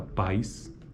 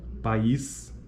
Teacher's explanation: Pais está na mesma sílaba, enquanto que país são sílabas diferentes, portanto, é só apenas uma sequência de vogais. Durante a articulação de 2 vogais em sequência, como na palavra país, cada vogal ocorre em uma sílaba distinta e cada vogal apresenta qualidade vocálica específica.